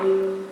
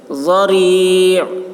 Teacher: ضاد کی آواز موٹی ہوگی، را باریک پڑھیں گے